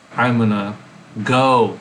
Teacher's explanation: none of those are emphasized so they all shrink